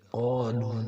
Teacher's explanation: اوپر مد ہے 4 الف کے برابر کھینچا جائے گا